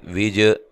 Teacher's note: جیم کو ہلا کر پڑھنا ہے، قلقلہ ہے